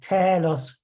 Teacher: in normal spoken Greek the acute accents such as the one on Telos meant that the syllable uh took a rising pitch of up to a fifth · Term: pitch accent